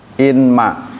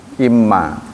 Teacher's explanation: karena nun bertemu dengan mim menjadi idgham bi gunnah, maka ditasydid